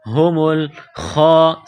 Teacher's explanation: خا کو موٹا کرنا ہے 1 الف کے لمٹ میں کھینچنا ہے. سین میں سیٹی کی آواز پیدا کرنی ہے.